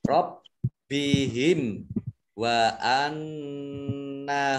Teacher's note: Mim sukun bertemu dengan huruf wawu, bacaan izhar syafawi, dibaca jelas. · nun tasdid dibaca gunnah, ditahan 2 harokat.